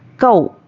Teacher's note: वाव पर जज़म और उसके पहले ज़बर वावलीन है, नरमी से जल्द अदा करना है।